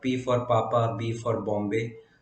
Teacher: And then bilabial sounds such as P for Papa, B for Bombay.